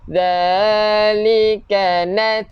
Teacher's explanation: keluarkan angin untuk ta, bukan kita lantunkan · Hujung lidah keluarkan sikit untuk zal.